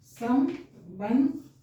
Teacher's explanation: अब सम ब बंध, ब के बाद फिर आधा न का उच्चारण कर रहे हैं, स्वर रहित।